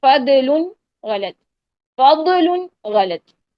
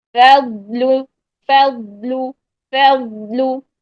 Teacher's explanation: آواز کو چلاتے ہوئے، قلقلہ نہیں کرنا · آواز کو نرمی کے ساتھ چلائیں اور اس کے اوپر استطالت لے کر آئیں. موٹا بھی رکھیں اس کو.